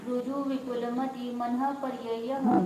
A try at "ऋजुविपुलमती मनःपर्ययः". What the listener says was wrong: मति ती दीर्घ करना, रुजु विपुल मति मन पर्यय। मति ही नहीं है, मति खाली। हाँ, मति ही मति ऐसा होता है, द्विवचन है वो। अब दीर्घ बोलना है ना, क्यों जल्दी जल्दी करते उसके लिए।